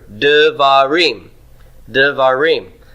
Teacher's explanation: we're going to reduce that first syllable because we're adding a syllable at the end and it's taking stress